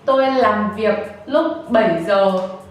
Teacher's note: I stress on the word làm việc and the word 7 giờ because those are important.